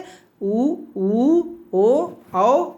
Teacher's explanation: जिन स्वरों के उच्चारण में मुंह की आकृति गोल हो जाती है वृत्त की तरह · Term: वृत्तमुखी स्वर